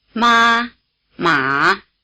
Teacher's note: the distinctive difference between the 2 tones you just heard is that one is high and one is low. But you may have noticed that while the high tone was like a single steady high note, the low tone was lower in the middle than at either end. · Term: high versus low